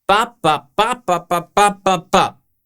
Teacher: Stressed, unstressed, stressed, unstressed, unstressed, stressed, unstressed, stressed. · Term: metric rhythm